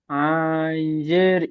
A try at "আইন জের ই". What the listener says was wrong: আন বলে টান হবে না, আইন।